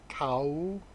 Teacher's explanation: So it's the rising tone